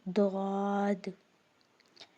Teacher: زبان کی کروٹ اور اوپر کی داروں کی جڑ سے ادا ہوتا ہے۔ اب کچھ لوگ جو ہے ضاد پڑھ دیتے ہیں، ضاد نہیں ہے، یہ ضاد، دال پہ قلقلہ آ رہا ہے، حروف قلقلہ میں سے نا دال۔